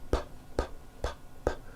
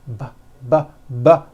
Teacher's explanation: So now let's look at the same sound, the P sound, p, p, p, but this time we'll add voicing by vibrating our vocal cords. Now we won't change a thing with our mouths, we'll keep that the same, we'll just add voicing.